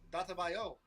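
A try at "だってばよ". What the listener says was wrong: Y'all kill me. Why do you say the T like it's a D?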